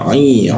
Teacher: nun mati bertemu ain itu tidak didengungkan ya langsung saja min langsung lalu masuk ke ainnya a i diakun ya.